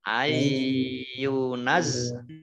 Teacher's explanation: Ayyunazzala, ya-nya dibaca double, ada tasdidnya. Nun sukun bertemu dengan huruf ya, bacaan idgham bi gunnah, idgham masuk bi dengan gunnah, mendengung ya.